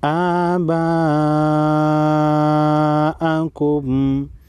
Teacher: بڑی مت کو 5 الف کے مقدار کھینچیں گے